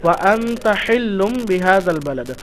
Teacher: ওয়া আনতা হিল্লুম বিহাযাল বালাদ, ওয়া আনতা নুন সাকিনের পরে হরফে ইখফা থেকে তা এসছে, তো নুন সাকিনের আওয়াজকে এক আলিফ পরিমাণ গুন্না সহ পড়তে হবে